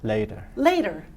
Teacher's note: it's a quick D. It's called a flap sound. And we're going to work on that.